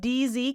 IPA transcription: dz